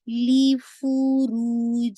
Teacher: रू आपको 2 काउंट पढ़ना है, वाव मद्दिया है